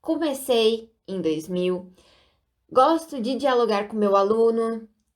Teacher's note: dá para notar aqui a troca do O pelo U na palavra comecei e aluno. E também a troca do fonema E pelo I, no início e no final das palavras.